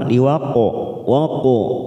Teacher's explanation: Laisa liwaqo atau qala qaf kita pantulkan, jangan lupa liwaqo waqo qala sugro karena mati di tengah kalimat, jangan lupa kita pantulkan